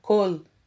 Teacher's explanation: Observe que na palavra kol, o Kametz tem por som a vogal O e não AU, como alguns afirmam